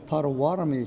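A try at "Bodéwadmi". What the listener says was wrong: there's a B and a P. So P is the colonized way, Potawatomi, but the correct way is Potawatomi.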